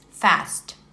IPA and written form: fæst (fast)